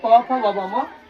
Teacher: आपका ओष्ठ जो था ऊपर नीचे लिप्स आपस में स्पर्श करता है। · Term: पवर्ग